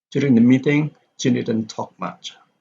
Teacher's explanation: So Jane here, because it has been mentioned because of its occurrence in the previous clause, then Jane here does not need to be stressed.